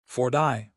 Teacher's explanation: In American English, the T in 40, 50, 60 often sounds like a soft D, flap T.